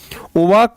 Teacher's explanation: दांत और ओष्ठ दोनों को मिलाकर के बनता है व यानी कि दंतोष्ठ